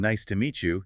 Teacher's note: So hearing nice to meet you, you repeat it, focusing on the stress on me.